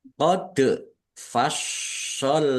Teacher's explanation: dal sukun bacaan qalqalah dibaca memantul ditampakkan pantulannya shnya dibaca dobel ada tasdidnya ditekan dan ditahan biar tampak dobelnya.